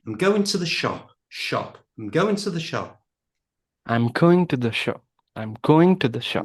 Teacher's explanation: Now, this is a statement. You're telling me, you're not asking me, you're telling me. So the pitch is going to go down.